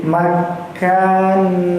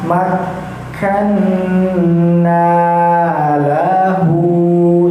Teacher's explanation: kafnya kita tahan terlebih dahulu karena kafnya bertasdid. Hukum awal tasdid ialah memasukkan atau menahan memasukkan hurufnya sebelum dibaca kita tahan sebanyak dua harakat ya.